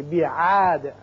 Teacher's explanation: یہاں وقت کی صورت میں دال ساکن ہو جائے گا اور اس کی صفت قلقلہ ادا کریں گے